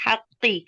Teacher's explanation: हा बारीक पढ़ेंगे, और हा जो हमारा हरफ हल्की वसतुल हल्क से है, इसे हम वसतुल हल्क से अदा करेंगे